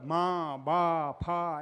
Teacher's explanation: એમ 2 હોઠ ભેગા કરો ત્યારે જ બોલી શકો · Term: ઓષ્ઠ્ય